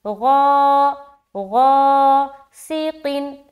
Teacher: غین الف زبر غا، موٹا کرتے ہوئے بولیں گے کیونکہ غین حروف مستعلیہ میں سے ایک ہے اور اس کے ساتھ الف لگ کر آ رہا ہے، لہٰذا غین بھی موٹا اور الف بھی موٹا پڑھا جائے گا۔